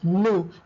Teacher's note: It's pronounced as nous, the S is silent